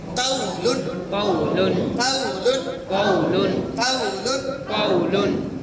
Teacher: واو ساکن سے پہلے زبر ہے واولین ہے نرم آواز کے ساتھ جلدی پڑھیں گے